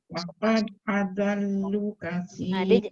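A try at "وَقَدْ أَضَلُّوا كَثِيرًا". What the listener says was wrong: Dia jangan adallu. Dia bukan adallu, adallu. Pastikan angkat pangkal lidah tengah lidah. Wa qad adallu katsira. Lu tu tak boleh pendek. Dia kena panjang sebab dia ada huruf waw mat. Walaupun kita nampak ada alif ziyadah tapi dia tetap ada mat iaitu waw kan.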